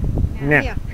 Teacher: NG, nga. Like we have a blocked nose.